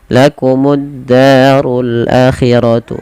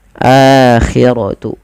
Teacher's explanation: di sini a-nya wajib dipanjangkan karena dia ada mad badal, yang dimana mad badal terjadi apabila adanya hamzah bertemu dengan huruf mad, dan sebenarnya di sini ketemu dengan huruf alif, maka a-nya dipanjangkan.